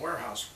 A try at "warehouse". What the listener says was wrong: No, warehouse is a different thing. It's actually not pronounced where. It's more of a whore.